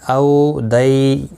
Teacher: واولین اور یالین ہیں، تھوڑا نرمی کے ساتھ کھینچ کر ادا کریں گے